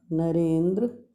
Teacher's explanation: अ और ई को मिलकर ए हो गया